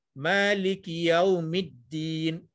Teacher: Contohnya kalau kita baca dalam surah Al-Fatihah, Maliki Yaumiddin, middin bawah dal tu di huruf dal tu ada syaddah atau sabdu, seolah-olah di situ ada dal mati dan dal hidup satu. Dal mati itu mid, kemudian dal lagi satu baru di bawah middin, seolah macam tu, ya.